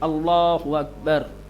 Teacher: ید اللہ، لام کو موٹا بنا کر کے پڑھیں گے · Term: تغلیظ